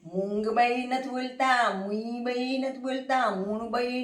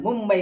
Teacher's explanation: અનુસ્વારની પછી બ છે બ પ વર્ગનો છે અને એનો અનુનાથિક મ છે એટલે આપણે મુંગબઈ નથી બોલતા મુબઈ નથી બોલતા મુનબઈ નથી બોલતા